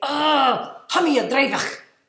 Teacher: I would say, "Oh, hamia dreivach," like I was really angry, and I'd overdo this hard CH, which really in Gaelic it's a softer CH sound, but I just overdid it and I had so much fun saying it.